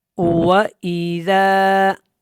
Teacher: واو جو ادا ہوتا ہے جب، تو ہونٹ گول ہوتے ہیں اور ای حمزہ ہے، تو یہاں پہ تھوڑا سا جھٹکا ہوگا، زال بالکل نرمی کے ساتھ ادا ہوگا۔